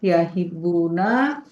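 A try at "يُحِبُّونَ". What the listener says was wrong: Panjangin, Bu. Yahibbuna. Yahibbuna.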